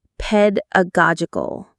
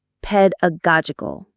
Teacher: The main stress is on the go syllable.